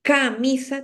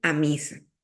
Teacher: pronunciación pero una omisión de ataque silábico consiste en eso que el primer sonido con el cual debe empezar una palabra lo omite no lo dice